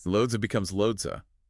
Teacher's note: That voiced ziz sound in loads transitions smoothly right into the schwa.